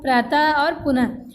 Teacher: विसर्ग का उच्चारण हा की तरह किया जाता है